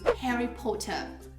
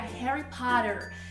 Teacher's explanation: no inglês americano, esse O tem um sonzinho muito mais aberto, enquanto que no inglês britânico ele é mais fechado e mais parecido, inclusive, com o O que a gente usa aqui no português.